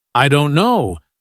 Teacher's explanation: the stress is on don't, not on I or no. That's what gives English its rhythm and music.